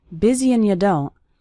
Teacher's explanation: That's very common for the word and to get reduced to just an n sound